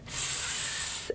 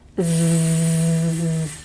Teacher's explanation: what we say is that si is voiceless and z is voiced